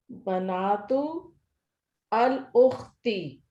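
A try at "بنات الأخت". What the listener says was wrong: अल उख्ती मिला के पढ़ेंगे तो क्या बन जाएगा? बनातुल उख्ती।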